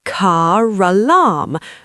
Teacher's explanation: When a word ends in a silent R and the next word is a vowel, the R comes back from the dead. We call this the linking R.